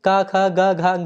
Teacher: घ उच्चारण स्थान होता है कंठ · क, ख, ग, घ, ग ये सभी दोस्तों कंठ के अंतर्गत आते हैं।